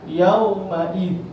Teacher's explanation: bila sebut yauma'id, langsunglah tak dengar bunyi tanwin tu · Tapi kalau tanwin dia berbeza. Kalau tanwin dia ada ketika wasal, ketika waqaf dia tak ada.